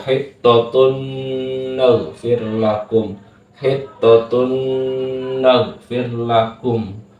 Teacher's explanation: Kemudian contoh selanjutnya, pokoknya ada nun mati atau tanwin bertemu dengan huruf yang keempat ini, maka hukum bacaannya adalah idgham bi gunna. Cara membacanya adalah 2 ketukan berdengung.